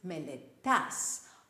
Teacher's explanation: You study is μελετάς with the stress on the end syllable.